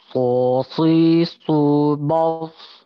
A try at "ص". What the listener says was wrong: Tapi harus diperhatikan ya, buat teman-teman, ketika setiap huruf yang mau bertemu dengan huruf istilah, contohnya huruf shad, huruf sebelumnya jangan ikutan tebal ya. Maka ketika sosi subas, ba-nya tetap ba ya, jangan bo, jadi bo.